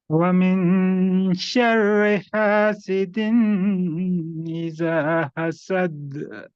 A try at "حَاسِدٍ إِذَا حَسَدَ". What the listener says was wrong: حسد سمپل، حسد نہیں کیونکہ دال پہ تشدید نہیں ہے. حسد حسد سمپل، اور ہا پہ مشق کرنا ہے.